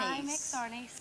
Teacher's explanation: That voice is too breathy for me.